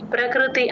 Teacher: ప కింద రకారం కరెక్ట్ గా వినిపిస్తుంది. ప్రకృతి ఆ క్రూ తేల్చి చెప్పాలి. ఆ ప్రక ఎంత స్ట్రెస్ ఇచ్చి చెప్తామో క్రూ అంత తేలిగ్గా చెప్పేయాలి